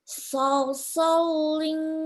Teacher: Lamnya tidak tasdid. So-nya 2 harokat.